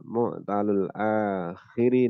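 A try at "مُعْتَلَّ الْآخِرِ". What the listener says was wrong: mu'talu ya, tapi mu'tala.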